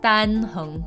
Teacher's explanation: It's not D-O-N, it's Dan, kind of an ah sound.